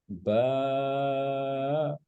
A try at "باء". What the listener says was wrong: ये एंड पे जाके झटका नहीं देना, बस आराम से।